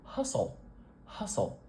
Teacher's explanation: And I'm gonna do one extra thing to this ol sound because North American English does something a little different with L after a vowel, especially at the end of a word. We put the back of our tongue up a little higher in our mouth, and it makes what we call a dark L.